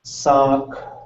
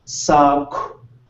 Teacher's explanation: So instead of going sock, it goes sock. You get this little breath of air, and your lips are pursed as if you were going to whistle. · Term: KW